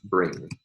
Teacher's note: the velar nasal like at the end of the word bring